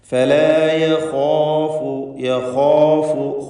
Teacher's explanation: ഫലാ യഖാഫു, യഖാഫു ഖാഇനും അലിഫിനും തഫ്ഖീം കൊടുക്കുക. ഇസ്തിഅലാഇൻ്റെ ഹർഫാണ് ഖാ. അതിനെ ദീർഘിപ്പിക്കുന്ന അലിഫിലും തഫ്ഖീം ഉണ്ടാവണം.